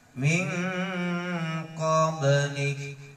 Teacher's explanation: ketika dia disukun, ketika dia dimati, dia akan memantul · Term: huruf qalqalah